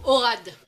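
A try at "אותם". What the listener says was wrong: Non, c'est un tav qui est là. Voilà, au tam.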